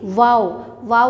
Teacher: होंठों को गोल करने से वाओ अदा होता है